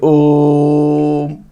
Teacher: ओ जो लंबा जा रहा है उसको हम क्या बोलेंगे, प्लुत स्वर